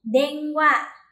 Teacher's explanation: Sau in là wa, thì mình sẽ biến thành ng luôn. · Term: âm mũi